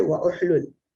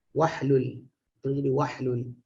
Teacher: oleh kerana hamzah tu hamzah wasal, huruf sebelum dia waw tu berbaris, maka dia terus hilang. Wahlul.